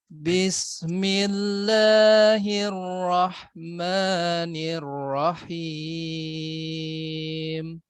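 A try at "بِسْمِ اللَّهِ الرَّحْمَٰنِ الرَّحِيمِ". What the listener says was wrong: Ya, rohnya jangan diputus ya. Bismillahirrahmanirrahim.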